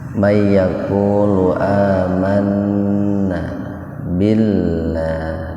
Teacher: lafaz Allah didahului kasrah. Jadi lafaz Allahnya dibaca tipis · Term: tarkik